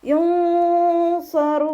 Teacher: നൂനിൻ്റെ സൗണ്ടിനെ വ്യക്തമായിട്ട് കേൾപ്പിക്കാതെ നാവ് മുകളിൽ തട്ടിക്കാത്ത രൂപത്തിൽ ഉച്ചരിക്കുക.